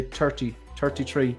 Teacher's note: Irish people a lot of time will say 30, 33. They'll drop the H, 33 and a third.